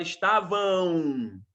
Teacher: O AM no final da palavra não é dígrafo, é ditongo. Você produz um som de AU.